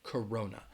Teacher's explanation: hear all the time Corona so it has three syllables but the first and the third syllable are going to have that schwa that sound